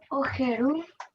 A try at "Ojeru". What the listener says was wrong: La J en guaraní se lee como Y. No se dice ojeroku, sino se dice oyeroku. Como Y se lee la J en guaraní. La J suena en español nomás así, nítido. Pero en guaraní tenemos que pronunciar como la Y. Oyeroku.